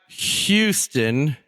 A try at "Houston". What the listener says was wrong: You put too much H in there.